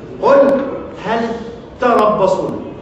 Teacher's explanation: عند اللام ساكنة لابد أن تظل على حالها ساكنة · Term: اجتماع الساكنين